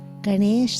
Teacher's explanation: the tongue is retroflex on the end n is curled back like ganesha's trunk